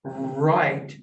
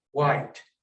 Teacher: initially the r is usually substituted with a w